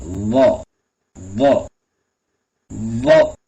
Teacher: நாக்கினுடைய அந்த நுனிப்பகுதியை மேல் பல்லினுடைய உள்பக்கம் வச்சு சொல்லணும்